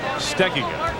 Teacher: pronunciation that most people use is on the second syllable, but says it should be on the first syllable